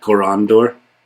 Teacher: the stress goes in the middle because that syllable has an ND in it